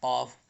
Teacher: اب یہ قاف زبان کی جڑ سے نکلتے ہیں